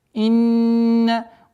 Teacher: Удержание назализации в размере 2 огласовок.